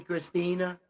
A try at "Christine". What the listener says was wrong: Christine? Christine, yeah.